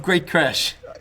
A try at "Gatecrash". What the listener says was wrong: You didn't even say Gate Crash. You said like Great Crash.